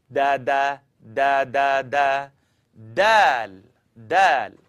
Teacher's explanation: I want you to tap your tongue behind the top teeth.